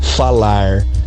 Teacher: os verbos a gente tende a não pronunciar o r no final deles